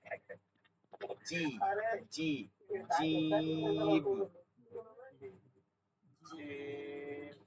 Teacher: শক্ত করে জিহ্বার মধ্যখানটা তালুতে গিয়ে লাগবে, শক্ত করে।